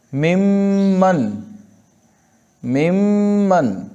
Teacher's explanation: उसके बाद मीम, मिम्मन, मिम्मन, मिन मन है तो मिम्मन बन गया। नून को मीम से बदला और गुन्ना किया, उस पर मुशद्दद करके उस पर गुन्ना किया